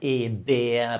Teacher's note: So the A should really be this A like in dark, like not. Okay, and the E in dere should be this forced smile, E dere, and long